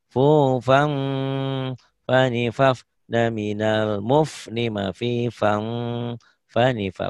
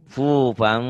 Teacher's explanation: jadi bunyi ikhfanya bunyi M ya, tapi bindeng. Fufang, tuh fang bibir bibir atas bibir bawah mingkem, tapi ngiung bindeng ke hidung.